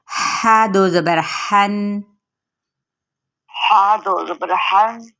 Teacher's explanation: پر نہیں کرنا اس کو، باریک تھوڑا سا اسمائل کرتے ہوئے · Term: ہا باریک